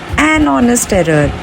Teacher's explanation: it's an honest error because H is silent here